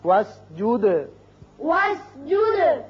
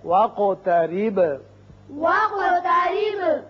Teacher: قاف پر قلقلہ ادا ہوگا اور با پر بھی